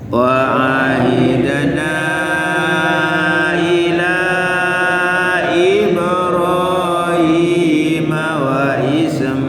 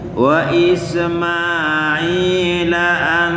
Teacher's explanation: Ismail kalau berhenti jadi panjang sampai 6 harokat. Tapi kalau disambung hanya 2 ketukan. Wa Ismaila an, jadi i, jadi sekarang disambung jadi 2 ketukan saja.